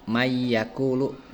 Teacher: Idgham bigunah itu bila bertemu contoh seperti itu ya dibaca jelas saja dalam dibaca diidghamkan saja dalam Al-Qur'an, seperti contoh lafaz mayyakulu bukan man yakulu, tapi si nunya dimasukkan diidghamkan ya. Jadi mayyakulu seperti itu, atau seperti tadi saya di muqaddimah hudal linnas itu seperti itu.